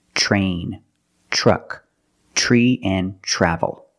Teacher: When you have TR together in any situation, you can pronounce it tr, but usually we don't. We pronounce it ch. Ch plus the R sound, chr. Example, train, truck, tree, and travel.